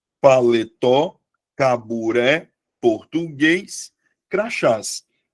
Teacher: todas as palavras tenham como sílaba tônica a última sílaba